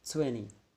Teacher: So in this syllable we can find that the strong stress or strong syllable, it's located in a twen. Twen is a strong syllable and ni is the weak syllable.